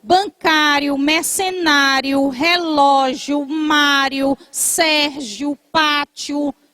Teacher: Bancário é acentuado pelo mesmo motivo de relógio e de natalício. A sílaba forte é a penúltima e termina em ditongo.